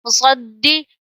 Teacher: اب یہاں پہ دال حرف قلقلہ جماعوں سے پڑھیں گے مشدد ہے